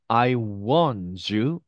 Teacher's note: D 다음에 Y가 오면 이 D 발음의 음가가 Y 발음의 영향을 받아서 약간 어떻게 해요? 우리가 알고 있는 이 Z 발음이 되고요.